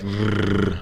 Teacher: we curl our tongue back in our mouth and it doesn't touch anything in there